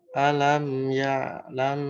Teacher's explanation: Nah, mim yang pertamanya jangan mantul, dialirkan.